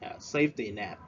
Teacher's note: We stress at the first syllable.